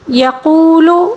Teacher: قاف کو پر پڑھیں گے اور واو مدہ کو ایک الف کے برابر کھینچ کر پڑھیں گے